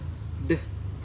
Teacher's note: Next one is d, voiced alveolar stop